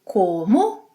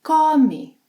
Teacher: For example, comer, to eat. In the infinitive, it has a closed O sound